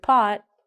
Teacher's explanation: when we say the word pot we don't say the t